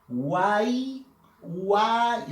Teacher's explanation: De estas tres vocales, la vocal A lleva fuerza de voz. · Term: triptongo